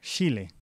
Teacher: the replacement of the sound cha with the sound she